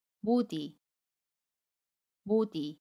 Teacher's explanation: 받침 시옷은 받침소리 디귿으로 발음하고요. 이 받침소리 디귿이 모음의 이응 자리로 가서 모디라고 발음합니다. 연음이에요. 모디, 모디.